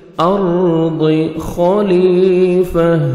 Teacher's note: را ساکن سے پہلے زبر ہے، آپ نے را کو پر کرنا ہے، ضاد کو موٹا کر کے پڑھیں گے۔